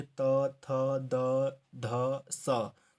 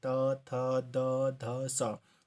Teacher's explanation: है जैसे त थ द ध स ठीक है तो देखिए जो हमारी जो जीभ है वो ऊपरी दांतों को टच करी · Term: दंत व्यंजन